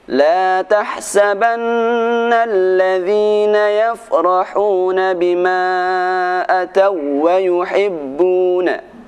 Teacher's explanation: apabila kita membaca huruf wawu yang bertasydid, tidak boleh dibaca dengung atau tidak boleh ditahan lama-lama. Begitu juga pada huruf lam tasydid, langsung dibaca dengan cepat.